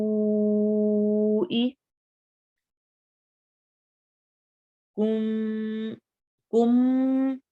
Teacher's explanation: کم کم میں ہونٹ صحیح پورے بند ہوتے ہیں